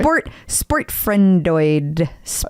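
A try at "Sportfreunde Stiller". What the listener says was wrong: I think you're adding syllables.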